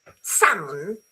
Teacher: Salmon, you don't pronounce the L. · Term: silent letters